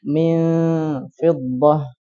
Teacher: Nah, ketika nun sukun atau tanwin bertemu dengan salah satu dari 15 huruf ini, maka cara bacanya adalah samar, disamarkan. Samarkan dengan gunnah yang panjang. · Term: ikhfa